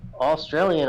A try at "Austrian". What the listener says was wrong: Austrian, not Australian. Austrian.